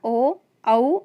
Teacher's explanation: होठ और कंठ से उच्चारण होता है ओ औ